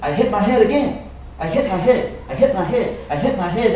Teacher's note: that t sound disappears